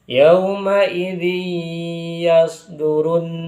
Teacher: ketika tanwin bertemu dengan huruf ya yaumaidzi yastdur itu maka dinamakan idgham bighunah. Karena tanwin dimasukkan ke huruf ya disertai dengan dengungan. atau dengan ghunah dengan kadar yang agak lama didengungkannya.